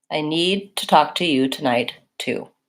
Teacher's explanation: I always pronounce these two kinds of to with the oo vowel